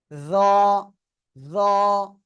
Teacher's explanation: জিহ্বার আগা সামনের উপরে দুই দাঁতের আগায় লাগাবো লাগিয়ে মোটা আওয়াজে উচ্চারণ করব